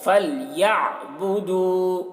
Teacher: عین کو حلق سے ادا کریں گے